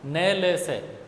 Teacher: अंतिम जो तीन बोल रहे हैं हम न, ल, स, वहाँ तक पहुँचते पहुँचते जीवा का अग्रभाग दांतों से थोड़ा सा ऊपर उठ के मसूड़ों को टच होने लग जाता है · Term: वर्त्स्य